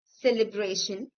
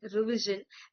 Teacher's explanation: The suffix t i o n produces a shh sound and the suffix s i o n produces a z sound.